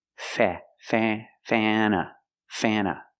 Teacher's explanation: Before the N, it changes a little bit. It becomes a little more nasal in your nose. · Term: short A sound